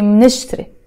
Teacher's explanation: you have to be very fast because here you have a consonant with a consonant. MN. There's no vowels here.